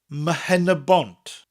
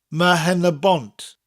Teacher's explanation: The P in Penrbont becomes an MH, Mhenebont. Notice that MH sound in Mhenebont almost sounds like an M followed by a H.